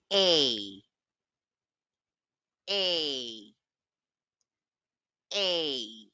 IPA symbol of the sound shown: eɪ